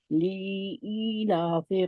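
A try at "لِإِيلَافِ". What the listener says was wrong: नहीं नहीं, ए नहीं है, ली को खींचना नहीं है, या नहीं आगे लगाने, और ए नहीं है।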